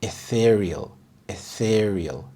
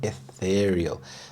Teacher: The stress is on the second syllable, ethereal.